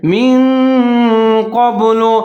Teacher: زیر ہے، نون ساکن ہے، آگے قاف کے اوپر زبر ہے، یہاں پر آپ نے اخفا کرنا ہے کیونکہ حروف اخفا قاف آ رہا ہے جیسے من قبل، من کے اوپر تھوڑا سا رک جانا ہے